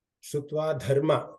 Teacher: ಧ ಮಹಾಪ್ರಾಣ ಇದೆ ಧರ್ಮಗೆ